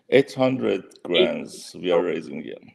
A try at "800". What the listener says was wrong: Here, slow down. Say the T, 800. Yeah, so just be careful.